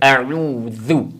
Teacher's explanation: اکثر تو پڑھا جاتا ہے اعوذ، یعنی عین کو ہم حمزہ پڑھتے ہیں، تو اس کا خیال رکھیں، عین کو صحیح صاف کر کے اعوذ برب اعوذ کے اندر ذال کا جو مخرج ہے، زبان کی نوک، سامنے والے دو دانت، ان کا کنارہ، ان دونوں کو ملانے سے ذال ادا ہوتی ہے